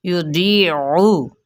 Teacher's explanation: आइन की पेश को वाज़े तौर पे पढ़ना है लेकिन लंबा नहीं करना